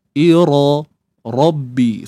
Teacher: Kena angkat pangkal lidah kita untuk dapatkan sifat tebal.